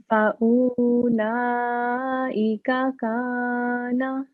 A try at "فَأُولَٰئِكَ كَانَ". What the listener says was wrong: Okay, because this waw is not carrying sukoon, so this is not waw madda.